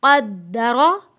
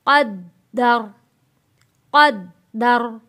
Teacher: وقف کرتے وقت زبر ختم ہو کے یہاں جزم آ جاتا ہے